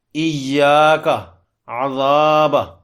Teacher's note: ذال پر زبر ہے اور آگے الف ہے، اس کو 2 لمبا کریں گے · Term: الف مدہ